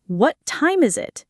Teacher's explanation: The T in what is often held blending into the T of time. This is particularly common when the T is followed by another consonant.